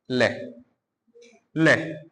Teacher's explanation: मसूड़ों से। और हवा कहां से आ रही है? दोनों साइडों से अगल-बगल से बाहर आ रही है। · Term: पार्श्विक व्यंजन